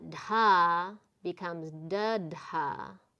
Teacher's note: The aspiration gets removed. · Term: non-aspirated counterpart